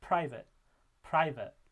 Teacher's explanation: while you're making that P sound your tongue is getting ready to produce the r and sometimes that can occur while you're producing that that P